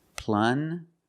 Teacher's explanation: Use the regular N and the J sound, like juice.